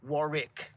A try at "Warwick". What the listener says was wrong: Not the first W, the middle one.